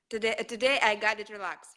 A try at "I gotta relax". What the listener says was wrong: I got to relax. So instead of got with that T sound, we say duh, like a D. I've got to. D like dog. Like I gotta relax.